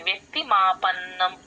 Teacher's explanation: రావాలి. అలాగే వ్యక్తి వ్యక్తి కూడా అంతే వ కింద యవత్తు వ్యక్తి మాపన్నం వ కింద యవత్తు క కింద త వత్తు రెండు వినిపించాలి